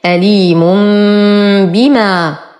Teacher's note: ولو ابتدأت بهذه الهمزة أعيدها للتحقيق، أليم بما، تنوين وبعده باء في كلمتين، فالحكم إقلاب، نقلب التنوين ميما ساكنة عند الباء تصبح أليم بما، مد طبيعي حركتين.